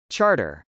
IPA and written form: tʃˈɑrtɚ (charter)